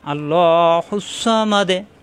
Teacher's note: আমরা জানি লাস্টের অক্ষরে সাকিন হয়ে যায়, তাহলে মা মেলবে দালের সাথে। মা দে, দালে সাকিন কলকলা হয়ে যাবে।